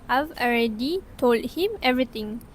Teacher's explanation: the final d sound in tol was dropped before the following consonant h in him · The d in told is elided. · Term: elision